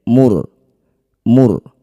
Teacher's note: amram minina inna kunna mursilin sama ya nun bertasydid disebut bacaan gunah musyaddadah dengungkan bunyi nun dua harakat inna kunna Ro sukun didahului dumah disebut bacaan ro tafkhim atau ro tebal. Angkat ujung lidah sampai menempel di langit-langit mulut. Getarkan ujung lidahnya sedikit saja.